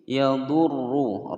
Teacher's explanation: ra berharokat dhammah dibaca tebal